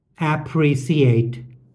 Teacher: Ah instead of ah, suh instead of shuh, and stress on first syllable ah, underlined in red, instead of stress on second syllable pre, underlined in green.